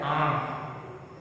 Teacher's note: जब आ बोलोगे तो नाक से भी उसका उच्चारण हो रहा है।